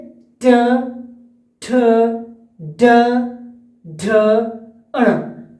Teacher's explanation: जैसे ट ट ट [गला साफ़ करने की आवाज़] देखिए टंग हमारा जो जीभ है वो मुड़ रहा है और जोर लग रहा है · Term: रेट्रोफ्लेक्स